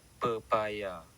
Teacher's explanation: Perkataan pepaya pula menunjukkan bunyi plosif tidak bersuara P di tengah perkataan